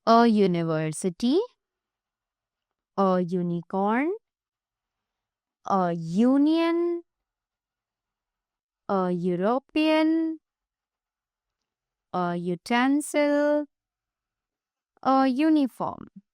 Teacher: Now, the above words begin with the sound YU and Y is a consonant.